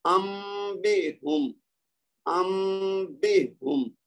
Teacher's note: یستنبتون. ٹھیک ہے، نون کی آواز کو میم میں بدلا، اس کے بعد با کی آواز آئے گی